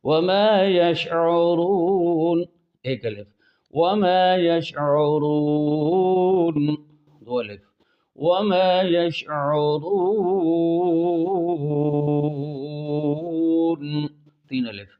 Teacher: حالت وقف میں اگر حروف مدہ کے بعد سکون عارض ہو جائے تو ادھر مد عارض وقفی اس کا نام ہوگا، اور اس کی مقدار 1 الف 2 الف 3 الف تینوں جائز ہیں۔